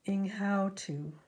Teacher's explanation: You can see the how is more stressed than what's right next to it. · The ing is very small and soft and short, and so is the to.